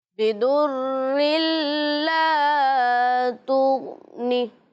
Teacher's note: انہوں نے ادغام کیا لیکن غنہ نہیں کیا